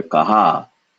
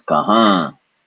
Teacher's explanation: kahan in the nose not with the n in the nose the nose vibrates there's no n sound no touching of the tongue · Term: nasalization